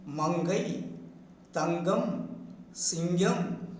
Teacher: When the blocked ear, when the vocal cords push out the blocked ear escapes through the nasal passage, that is through the nose, making the nasal ing, making the nasal ing. That is, ing is produced by raising the back of the tongue towards the soft palate and making a tight contact with that and sending out the air through the nose.